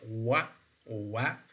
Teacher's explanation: labial means that the two lips come close, but they're not touching. Velar, so it means that the back part of our tongue is also, to some extent, is involved in the production of this sound. · When we say wa, wa, this is approximate, means that the active and passive articulators come close. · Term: voiced labial velar